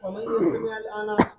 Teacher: الآن کے اندر انہوں نے سکتہ کیا، یہ لام تعریف ہے، اس کو ذلام کہتے ہیں۔